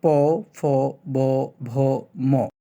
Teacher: দুই ঠোঁট থেকে যে ধ্বনিগুলো উচ্চারণ হয় সেগুলোকে দ্বিউষ্ট ধ্বনি বলা হয়